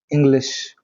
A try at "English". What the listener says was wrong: There was a slight sir sound initially. And shaw. See the word shaw? So you just have to be mindful. You are able to pronounce it right. You just have to make a conscious